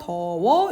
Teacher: 비읍이 반모음 우우로 바뀐 후 어랑 결합을 해서 더워 이렇게 결합하게 되는 거죠 순경은 비극 같은 경우에는 중세시대에 이렇게